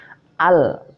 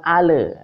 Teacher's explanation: jadi lam ini bukan Qalqalah tidak boleh memantul jadi membacanya Al bukan Ale biasanya sangking enaknya sangking njonja dia